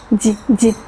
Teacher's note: Es justo la fricción que hace sonar el sonido blandito, d, d, fricción.